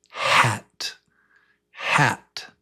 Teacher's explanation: the sound is it's just breath, just air. You can put your hand in front of your mouth and you can feel it.